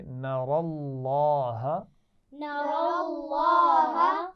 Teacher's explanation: حتی، ہا کے مخرج کا خیال رکھنا ہے. نر اللہ، را کو بھی موٹا پڑھیں گے اور لفظ اللہ کے لام کو بھی موٹا پڑھیں گے